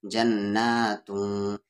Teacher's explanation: تنوین کی آواز کو یہاں پر چھپا کر پڑھیں گے، تن نہیں پڑھیں گے، توں پڑھیں گے کیونکہ اخفا ہو رہا ہے۔